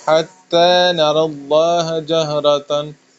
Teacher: حتی تا کو باریک پڑھنا ہے